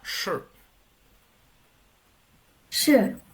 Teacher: casi no suena la i verdad